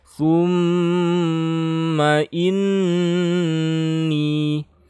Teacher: ini gunnah musyaddah, ditahan juga sekitar 3 harokat ya, tapi ini gunnah bukan dengung